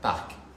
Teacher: It's just kind of you kind of ride on top like parc a little bit. You hear the R, but you don't really lean into it.